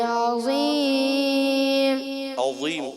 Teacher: ضا کی ادائیگی کلیئر کریں گے زا نہ ہو جائے